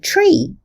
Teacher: the sound t sounds a little bit like ch. It is slightly palatalized